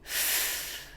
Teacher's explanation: When I say f, you can hear air coming out, but my voice is off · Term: voiceless